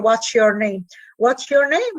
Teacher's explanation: The s, which is alveolar, becomes palatal in the vicinity of a palatal sound. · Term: assimilation